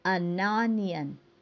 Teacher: Và nếu như cái từ phía sau được bắt đầu bằng một nguyên âm thì ở phía trước ờ phải biến thành ần. Thực ra người ta biến ờ thành ần là để dễ đọc và nối cái chữ n trước với nguyên âm phía sau. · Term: đọc nối